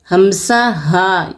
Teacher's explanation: यह हलक के आखरी हिस्से से अदा होते हैं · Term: रूफे हल्की